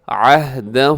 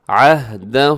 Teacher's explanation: ہا کو ہلائیے گا مت، اس کو ڈبل نہیں کرنا، اس کی آواز کو ایک ہی ساؤنڈ ہوگا، عہدہ، اس کے اوپر جو مد ہے اسے مد منفصل کہا جاتا ہے۔